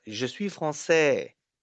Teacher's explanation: We have 4 syllables here. A is the longest.